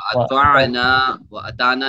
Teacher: واطعنا یعنی طا موٹا ہے، اونچا ہے، نون الف زبر نا.